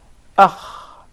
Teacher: So the articulation point is the closest part of the throat. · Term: kha